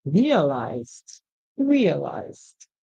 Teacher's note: Now it's time for us to add the D sound. So the ED would make the D sound because we can actually hear the Z at the end